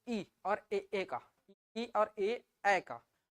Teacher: जीभ का आगे वाला भाग फैल के ई और ए बोलने में मदद कर रहा है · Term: अग्रस्वर